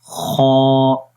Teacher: آپ اس امیج کے اندر بھی دیکھ سکتے ہیں کہ یہ وہ پوائنٹ ہے کہ جہاں سے خا کی آواز یعنی کہ گلے کے سب سے اوپر والا حصہ جو منہ کی طرف ہے وہاں سے ہم پڑھیں گے اس کو۔ تو میرے ساتھ آپ نے ریپیٹ کرنا ہے، خا۔ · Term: خا کا مخرج